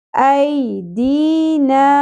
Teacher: یا ساکن سے پہلے زبر حرف لین نرمی سے، اے نہیں پڑھنا. ای دی، یا ساکن سے پہلے زیر ہو تو یہی یا ساکن حرف مدہ بن جاتا ہے، ایک الف کے برابر کھینچا جاتا ہے.